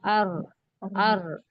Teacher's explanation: जबान की नोक और ऊपर दांतों की जड़ का ऊपरी हिस्सा। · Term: र का मखरज